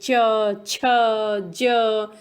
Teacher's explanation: च जब हम बोल रहे हैं तो तलवा और दांत दोनों से आवाज निकल रही है